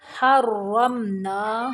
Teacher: را کو موٹا پڑھنا ہے اور میم کو صرف ظاہر کرنا ہے